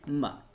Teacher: मीम का मखरज क्या था, आपको याद होगा, दोनों होंठों को मिलाने से मीम अदा होता है